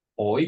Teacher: In Birmingham, they would say something like oi, give it for oi, like I become oi.